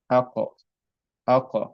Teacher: the qaf, I'm making a vibration sound. I'm not just stopping on the articulation point of qaf and just stop on it. I'm actually vibrating my mouth more to make the sound more being echoed and more vibrated. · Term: echo sound